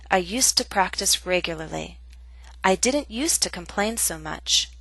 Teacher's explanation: both the affirmative and the negative form have the same pronunciation USTA · Please note 2 different pronunciations of this structure. When it's followed by a consonant sound, we do not pronounce used to with a full vowel sound. To becomes t.